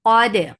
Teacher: Dal will get sifa of qalqala and it is sharp.